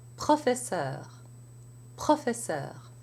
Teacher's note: in French the tongue is already back getting ready for the sound for the r before the lips come together for the P